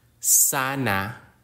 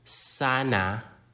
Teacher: closing the vocal cords which is a natural part of Filipino pronunciation particularly at the end of words ending with vowels